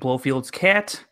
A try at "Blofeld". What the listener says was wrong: Blofeld. Blofeld. You said Blofield. You keep saying Blofield.